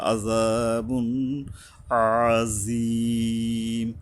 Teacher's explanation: ওয়ালাহুম আযা, আ এই যে আইন গলা চেপে, জাল আযা এই যে পাতলাভাবে উপরে দুই মারির মাঝখানে দুই দাঁতের আগার থেকে জিহ্বা মিলবে গিয়া